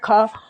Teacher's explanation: ये दोस्तों स्पर्श व्यंजन है, कंठ से बोला जाता है खा, और अघोष भी है और महाप्राण भी है।